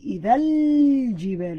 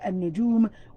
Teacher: I'm emphasizing the L sound. Unlike in this word, النجوم, we're taking out the L sound. So al-jibalu, in we're emphasizing, and they indicated that for you by putting that sukoon on top.